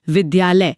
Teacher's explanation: जब विद्या और आलय मिलते हैं ना तो दोनों के आ मिलकर एक नया और लंबा आ बनाते हैं।